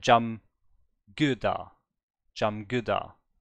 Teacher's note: if it's in the middle, it's a G, and if it's in the beginning, it's a K.